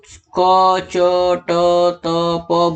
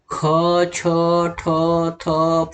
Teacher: महाप्राण में व्यंजन के उच्चारण के समय मुंह से अधिक हवा निकलती है।